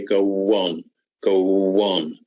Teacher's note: This is an example here of what we call intrusion, where the W sound here, this W sound has come in here in order to make this speech sound more natural, so that we don't say go on, we say go on, go on. So there's a W that's found, that's intruded here.